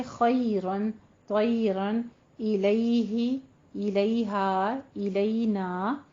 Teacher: आपने मुंह को पस्त करना है लेकिन पूरा याय मद्दा की तरह अदा नहीं करना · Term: यालीन